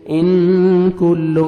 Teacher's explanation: यहाँ पे आपने इख्फा करना है, नोज में साउंड लेके जाएंगे। इन कुल्लो, काफ को बारीक पढ़ना है।